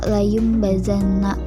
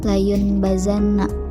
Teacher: maka nun mati atau tanwin itu harus dibaca mim karena bacaan iqlab. Contohnya, layum bazanna, itu harus dibaca layum bazanna, bukan layun bazanna.